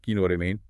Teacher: When you use this phrase as a question, your inflection, your tone, >> it rises sharply at the end of the sentence. · That rising tone clearly asks for confirmation.